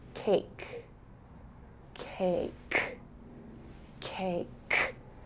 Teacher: it's really the middle of your tongue on the roof of your mouth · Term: the K